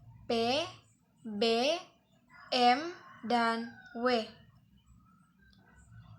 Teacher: bunyi yang dihasilkan oleh keterlibatan bibir atau labium bawah dan bibir atau labium atas. Caranya, bibir bawah sebagai artikulator dan bibir atas sebagai titik artikulasi. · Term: bunyi bilabial